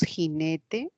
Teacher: vamos a referirnos a este fonema fricativo, ¿no? Fonema fricativo velar.